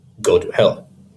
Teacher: anapaests, which are two unstressed syllables followed by a stressed syllable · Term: anapests